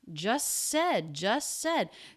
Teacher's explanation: you just said it nope it's dropped just said just said these two words linking together a single s sound there's no stop and restart of that sound it just links them together you just said it you just